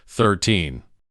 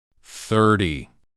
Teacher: The stress goes on teen. Your voice goes up at the end.